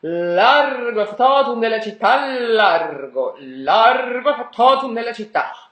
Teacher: Also because the double T of factotum needs to match the double T of città.